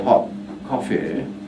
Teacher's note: deliberate transition of place of articulation, that is from T to K, hot coffee. · You have to hold the closure and carefully and you know, gradually move to the K position without exploding. That's the knack of it.